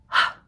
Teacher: the place that it closes down here is way back here in our throat. Voice is off. Airflow is continuous for that one. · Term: h sound